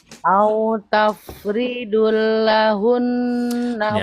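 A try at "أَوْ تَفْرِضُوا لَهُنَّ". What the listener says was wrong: Ya, tafridul. Mana dulnya? Nggak ada dulnya, Bu.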